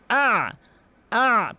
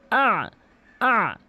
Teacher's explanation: উচ্চারণ করতে হবে আইনটি হলকের মাঝখান থেকে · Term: আইনের উচ্চারণ